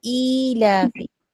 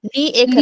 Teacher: जब कसरा और य साथ में आता है तो उसको हम 2 हरकत तक ई करके खींचेंगे